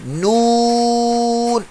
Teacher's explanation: تو آپ کی نون کی آواز جو بالکل منہ سے نکلے گی، ناک سے نہیں نکلے گی، نون ایسے۔ اگر آپ پڑھیں گے سلو آواز نون نون تو پھر ناک میں۔